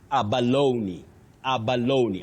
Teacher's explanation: It is not silent. It takes that sound E. That is the high front sound E. So you say Abaloney.